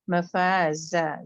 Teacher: जा के लिए आपकी बजिंग साउंड आनी चाहिए। यहाँ पे 2 काउंट होगा, जितना फा उतना ही जा।